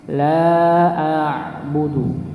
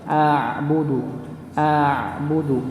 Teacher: Maka dipanjangkan 4 rakaat la a'budu. Nah, ini ketika baca huruf ain maka dia punya sifat yang sama dengan lam. Punya sifat tawassut atau bainiyah, sedikit mengalir.